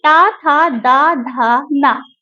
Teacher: ये द दांत दंत माने दांत से टच होते हुए निकलती है